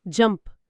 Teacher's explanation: పదం చివర పి శబ్దముంది. ప అని పలికితే గొంతులో కదలిక ఉండదు, కాబట్టి ఇది వాయిస్లెస్. 2వ నియమం ప్రకారం దీని ఉచ్చారణ జంప్డ్ అవుతుంది.